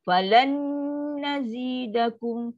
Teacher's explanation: Falan, dengung paling sempurna. Dia lama.